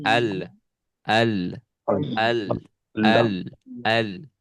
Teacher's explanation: dia dari dalam suaranya mengalir, tetapi tertahan oleh ini ujung lidah, ya, yang naik ke gusi. Jadi kadarnya pertengahan. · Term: sifat tawasud